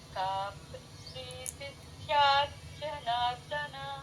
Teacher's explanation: ర కింద ద మామూలు ద అండి మహాప్రాణం లేదు